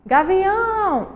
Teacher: gavião, a sílaba mais forte é a última, então a gente classifica ela como oxítona.